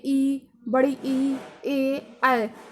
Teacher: अग्रस्वर यानी कि हमारी जो जीभ के आगे वाला भाग है वो वर्क करेगा